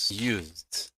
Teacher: the last sound, use, I can feel in my throat